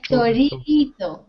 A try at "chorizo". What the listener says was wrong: Chorizo. No, chorizo no, chorizo. Es muy suave, es mucho más suave, es chorizo, chorizo.